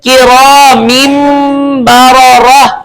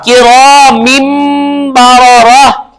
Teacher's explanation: تنوین کے بعد حرف اقلاب آ گیا, تو اس لیے ہم نے تنوین کو کس سے بدل دیا؟ میم سے